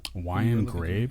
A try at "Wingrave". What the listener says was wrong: he's close. He added an E.